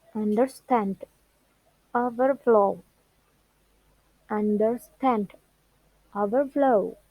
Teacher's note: the stress is on the second part